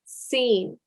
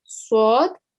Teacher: the scene it's like a very sharp s sound yeah but with the sword it's got like a thick s sound